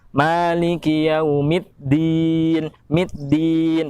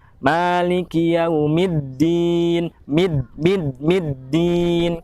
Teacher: Banyak orang yang membaca huruf dal pada yaumiddin itu seolah seperti membaca ada huruf taknya.